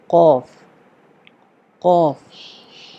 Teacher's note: زبان کی جڑ جب کوے کے قریب تالو سے لگے اوپر، ٹھیک ہے، تو اس سے قوف ادا ہوتی ہے